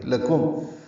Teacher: لکم لام کاف باریک ہے، میم ساکن پہ اظہار ہے.